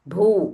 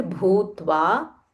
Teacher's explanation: This is mahaprana bha and it is a dirgha.